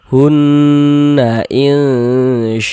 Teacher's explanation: Kita gunnahkan. Di bagian hunnya itu suaranya itu kita tahan. Kita panjangkan sejenak ya. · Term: gunnah musyaddadah